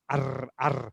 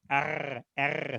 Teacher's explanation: We sort of have the front R, R. In German, the R comes from way back here, from the back of the throat.